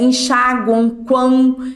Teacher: ele sai tanto o ar pelo nariz quanto pela boca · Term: tritongo somente nasal